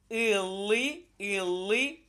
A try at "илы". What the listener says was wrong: илы. Не, не и. Илы. Илы. Илы.